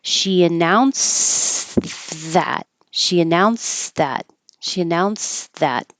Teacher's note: So I'm in the D position or the T position, it's the same, and I'm getting my airflow started before I even start the TH, and that's where the S comes from.